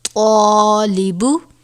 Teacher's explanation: طا الف زبر طا، لام زیر لی، طالی، با پیش بو، طالبو۔ یہاں پر الف سے پہلے حرف مستعلیہ میں سے طا آیا ہے جسے پر پڑھا جاتا ہے، اس لیے ہم یہاں پر الف کو طا کے ساتھ الف کو بھی ہم پر پڑھیں گے